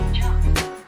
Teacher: kata kerja diakhiri dengan unvoiced sound atau bunyi yang tidak disuarakan, maka ed diucapkan seperti bunyi huruf T tanpa tambahan suku kata